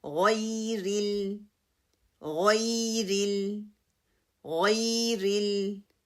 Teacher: آپ کی زبان کا جو پچھلا حصہ ہے، جو جڑ ہے وہ اٹھے گی، اور مدلین اس کو سافٹلی آپ پڑھیں گے، را کی کسرہ کو مجہول نہیں کریں گے.